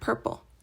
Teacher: a voiceless bilabial plosive, or stop, making a P sound like in the word purple